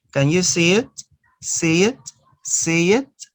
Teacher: Notice that you are inserting the consonant ya.